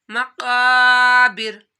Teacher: काफ मोटा हरूफ है, हरूफ मुस्तालिया में से है, इसको मोटा पढ़ना है और अलिफ से पहले ज़बर आ रहा है तो आप लोगों ने अलिफ मदा करना है।